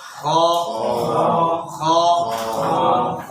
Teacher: মুখ ভরা আওয়াজ বের হবে, জিহ্বার গোড়ার দিক উপর দিকে উঠবে, ঠোঁট স্বাভাবিক থাকবে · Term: মোটা হরফ